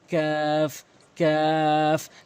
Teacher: একটি কফ, জিব্বার গোড়া উপরে তালু থেকে ধাক্কা দিয়ে কিন্তু কফ কফ কফ। এরপরে কাফ, জিব্বার গোড়া হতে একটু আগে বাড়াইয়াই কাফটি উচ্চারণ হয় উপরে তালুর সঙ্গে